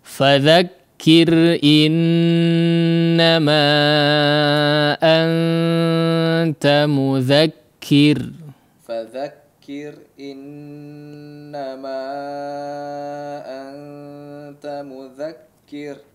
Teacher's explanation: Kondisinya dibaca tipis. Di sini ada dua huruf ra yang kebetulan dalam kondisi yang sama ya, bertanda sukun ya, dan didahului oleh huruf yang berharakat kasrah sehingga dibaca tipis ya. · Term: huruf ra dibaca tipis